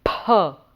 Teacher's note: Now ‘pha’ is a letter that there is a tendency to pronounce it as a fa but in sanskrit it would be wrong to pronounce it as a ‘fa’ that's more what the other languages like Hindi etc.